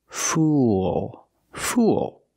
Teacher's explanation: not fool it's fool use the dark L at the end link The Sounds o with a dark L it makes an extra sound